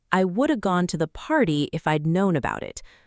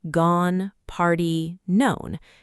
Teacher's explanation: But naturally, it flows like I would have gone to the party if I'd known about it. Only a few words really stand out. Gone. Party. Known. everything else kind of rides along quickly and your ear needs to learn to catch those stressed beats and let the small words wash over you instead of trying to hear every single syllable perfectly.